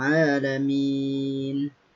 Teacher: Jadi ain setelahnya ada alif yang sukun atau mati, itu disebut dengan mad tabi'i atau mad asli. Panjangnya hanya 2 harokat atau 2 ketukan.